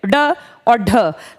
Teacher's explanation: इनको बोलते टाइम ना जबान जीभ थोड़ी सी ऊपर जाके अचानक से तेजी से गिरती है। ड और ढ। लठमार भाषा में खास इनका यूज किया जाता है।